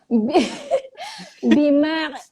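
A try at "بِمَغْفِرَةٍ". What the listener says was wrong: Itu macam ada ain, Cik. Dia ada gantung. Jangan gantung dia. Bimaghfiratin. Okey, kenapa dia jadi magha? Sebab huruf ghin dia tak ada qalqalah.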